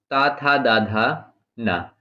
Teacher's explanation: ये दंत से बोले जाते हैं। इनको दंत्य वर्ण कहते हैं।